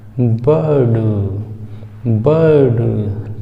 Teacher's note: बा को थोड़ा सा लंबा खींचेंगे और उसके बाद डा बोल देंगे, बर्ड नहीं दोस्तों, बर्ड नहीं, बर्ड, बर्ड।